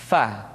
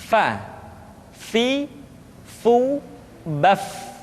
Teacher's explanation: diucapkan dengan menyentuhkan ujung dua gigi seri kita bagian atas dengan bibir bawah bagian dalam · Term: huruf fa